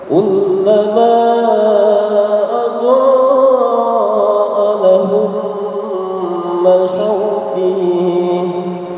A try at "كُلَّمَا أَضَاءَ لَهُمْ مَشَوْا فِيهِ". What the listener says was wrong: Fih. Kalau stop fih. Masyaw fih. Kurang lama humnya kurang lama. Lahum.